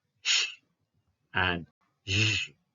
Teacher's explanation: The first one is voiceless, whereas the second one is voiced.